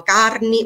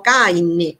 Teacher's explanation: in cui la R che precede alcune consonanti si vocalizza